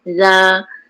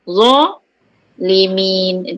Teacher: Za kita tak perlu angkat pangkal lidah kan. Za rahang terbuka aje.